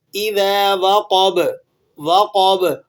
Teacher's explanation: قوف بھی موٹا ہوگا اور با بھی موٹا ہوگا اور با پر قلقلہ بھی ہوگا